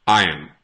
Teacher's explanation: Some people pronounce it with the R, but I personally would not pronounce this with the R. I would just say iron. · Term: without the R